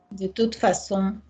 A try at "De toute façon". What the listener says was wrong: Thank you. Lovely.